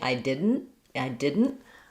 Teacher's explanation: I might just not release that t I didn't if I I can also say I didn't with a little bit of a true t sound there.